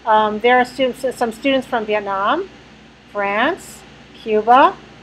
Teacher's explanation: that's incomplete. Because my voice is going up. Aren't you you're still waiting for me to come down, right? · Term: incomplete list